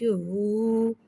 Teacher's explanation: واو مدہ کو ایک الف یعنی 2 حرکات کے برابر کھینچ کے پڑھیں گے، اور پیش کو ہونٹوں کی گلائی کے ساتھ ادا کر کے پڑھیں گے